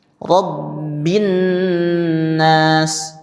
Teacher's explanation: tidak dibaca Rabbil nas tapi langsung ke huruf nunnya. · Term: syamsiyah